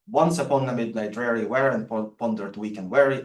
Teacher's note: a reversed iambic pattern, where you expect stress to be on the odd syllables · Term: trochaic poetry